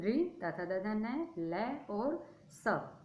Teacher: इनका उच्चारण स्थान दंता, दांत होते हैं। दांत बहुत सारे होते हैं इसलिए बहुवचन का प्रयोग हुआ है।